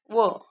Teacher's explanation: या व्यंजनाचे उच्चारानुसार असलेले नाव शोधून पर्याय लिहा व [संगीत] दंतोष्ट व ला काय दात लागतात ओट पण लागतात · वला काय दात लागतात आणि ओठ पण लागतात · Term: दंतोष्ठ